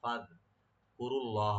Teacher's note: রা এখানে ডিপ করে লফজ জালালের সাথে মিলে পড়বো। লফজ জালাল এখানে নামে মোটা হবে, এখানে ফাদ কুরুল্লাহ ডিপ করে পড়তে হবে।